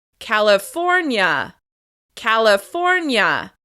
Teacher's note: As you can hear, we're stressing the third syllable.